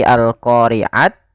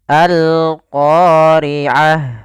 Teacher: ketika kita wakaf ini kita ganti dengan huruf ha yang dimatikan maka bukan lagi Al qoriat tapi alqoriah Nah jadi tidak lagi